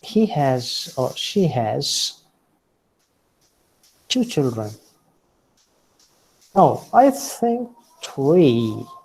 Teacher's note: So when you wish to correct something, at that time, you make use of falling rising tone.